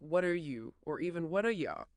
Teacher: When what is followed by a vowel sound like an r, that t often flaps. What are you becomes something like what are you or even what are ya. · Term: flap t